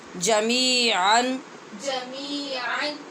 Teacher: یہاں نون تنوین کے بعد حمزہ ہے اس لیے جمیعاً پہ ہم اظہار کر رہے ہیں